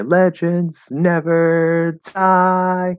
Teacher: when they release the D, they do it in sort of a lazy or slurred way. And that Z kind of comes out between the D and the vowel.